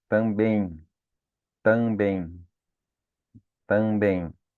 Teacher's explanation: o E que está antes se forma com o M que tem som de I. Por isso que ele se torna um ditongo também, tá? · Porque o M tem um som de I no final